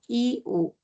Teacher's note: Por qué I u está como alto porque cuando lo pronuncio está bien cerca al paladar O sea la altura de la lengua sigue hacia arriba no